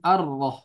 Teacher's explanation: alif lam yang dia hilang atau diidghamkan hurufnya menjadi ar-rah, bukan al-rah tapi ar-rah. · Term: alif lam syamsiyah